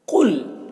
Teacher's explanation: قاف کو پر پڑھنا ہے، یہ حروف مستعلیہ میں سے ہے، اور یہاں پر لام ساکن حرف ہے اور یہ لام مشدد حرف ہے، تو ساکن والا لام یہ مشدد والے لام کے ساتھ مدغم ہو جائے گا، تو پھر یہ لام کو نہیں پڑھنا ہے، ساکن والے لام کو۔